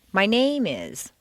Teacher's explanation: If you stress name, it sounds as if you're going to continue with more personal information. My name is so-and-so, my address is such and such, my blood type is O.